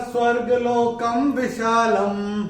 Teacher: क के ऊपर अनुस्वार के बाद का अक्षर है व, और अनुस्वार के बाद जब व आएगा तो अनुस्वार का उच्चारण होगा म